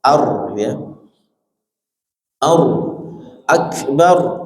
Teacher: ar-nya dibaca tebal, tafkhim